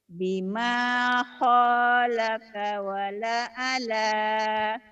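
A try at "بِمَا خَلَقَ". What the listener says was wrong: Bima holako, bukan holaka. Bima holako wala ala.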